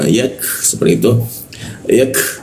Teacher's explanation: Siku tenggorokan lidahnya diturunkan sehingga rongga udara terbuka dan ada hembusan udara cukup kencang ya.